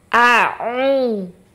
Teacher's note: pada saat kita melafalkan huruf hamzah itu di tenggorokan bagian bawah